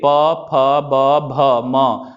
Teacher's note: तो जो हमारा पवर्ग है प फ ब ब बोलेंगे, तो बोल के देखिए प फ ब भ म बोलेंगे तो दोनों ओठ सटेगा, दोनों बिना ओठ को सटाए आप प नहीं बोल सकते हैं, फ नहीं बोल सकते हैं, म नहीं बोल सकते हैं, बोल के दिखाइए, नहीं बोल पाएंगे। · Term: ओष्ठ